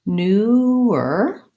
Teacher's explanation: we have the tense vowel oo. We want to make sure we have good tongue rounding and don't get lax in that vowel.